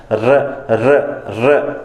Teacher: जब आप र का उच्चारण करते हो तो जीभ का जो ऊपर वाला नोक वाला हिस्सा होता है वो कहीं ना कहीं थोड़ा बहुत कंपन करता है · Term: लुंठित